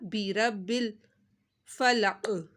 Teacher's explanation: برب الفلق، یہاں پر کاف ساکن ہو جائے گا اور قاف کے اوپر کلکلا کرنا ہے اور موٹا پڑھنا ہے